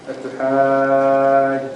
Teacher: make sure the mad al-lazim is longer, much longer than what you did